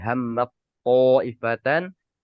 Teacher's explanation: Anggap saja taknya hilang. Kita langsung masuk ke huruf to seperti itu.